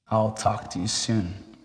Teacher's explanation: the words talk and soon receive the stress